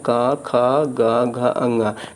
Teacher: का वर्ग के 5 वर्ण जो है वो कहाँ से बोले जाते हैं, ये कंठ से बोले जाते हैं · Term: कंठ वर्ण